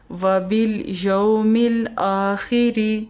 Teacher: لام الف لا، کھڑا زبر کی وجہ سے 1 سیکنڈ کے لیے لمبا کریں گے